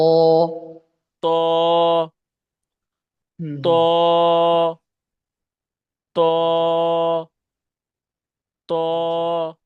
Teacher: জিহ্বার আগা উপরে দুই দাঁতের আগার সাথে থেকে পড়েছি। আর ত উচ্চারণ হবে উপরে দুই দাঁতের গোড়ার সাথে।